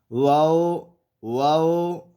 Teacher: واو ادا ہوتا ہے دونوں ہونٹوں کے گول کرنے سے